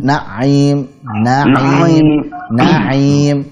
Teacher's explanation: Ainnya jangan terlalu ditekan Pak ya, supaya tidak seperti bertasydid.